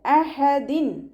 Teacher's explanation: തെൻവീനിന് ശേഷം ഇവ്ഹാറിൻ്റെ അക്ഷരമായിട്ടുള്ള ഹംസയാണ് വന്നിട്ടുള്ളത്. തെൻവീനിലുള്ള നൂനിൻ്റെ സൗണ്ടിനെ വ്യക്തമാക്കി മണിക്കാതെ ഉച്ചരിക്കുക. അഹദിൻ. നൂനിൻ്റെ സൗണ്ടിനെ വ്യക്തമായിട്ട് കേൾപ്പിക്കണം.